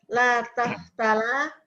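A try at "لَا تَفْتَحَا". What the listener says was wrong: Bu, kok harus fokus, Ini pakai H bukan pakai la. La taftah, la taftaha gitu.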